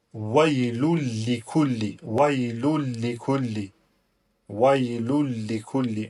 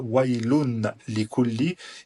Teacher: il y a un lam qui vient juste après le tanwin, donc le son du nun, et bien là on va annuler complètement la prononciation du son nun. Ni on va le prononcer avec la langue, d'accord?